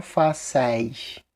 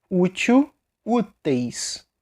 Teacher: se for na penúltima como é o caso de fácil vai ficar com eis só que fechado